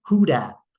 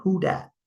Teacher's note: the lack of use of the TH sound, where that becomes dat